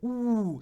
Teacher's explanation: not being an e but a vowel with lip rounding